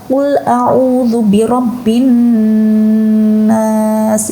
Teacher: nun yang ditasydid yang seharusnya dibaca gunnah, harus berengeng ya gitu ya, harus dari dalam hidung. Tetapi dia tidak dibaca qul a'udzu birabbin nas.